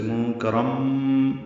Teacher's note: تنوین کے بعد میم آنے کی وجہ سے منکرم، ادغام ناقص مع الغنہ